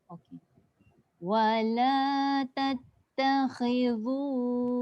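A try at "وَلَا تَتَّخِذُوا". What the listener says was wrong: Jadi dha tu. Zu hujung lidah je. Pangkal lidah tak angkat. Wala tattakhidhu. Zu.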